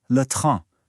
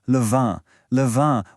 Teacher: Do you hear that and in sound? The n isn't really pronounced. It just makes the vowel nasal. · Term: nasal vowels